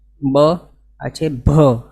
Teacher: પણ બોલવા માટે કોઈ વિશેષ પ્રયત્નની જરૂર છે જ નહીં પણ ભ બોલવા માટે અહીંયા પ્રયત્ન કરવું પડે અંદરથી પ્રાણ પૂરવા પડે એવું છે